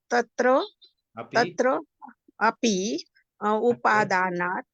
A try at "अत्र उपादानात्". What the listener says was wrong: अत्र बोलिए, अत्र छोड़ दिया आपने, तत्र अपि,